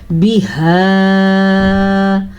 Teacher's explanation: مد کا خیال رکھنا ہے، یہ ہا سینے سے نکلتی ہے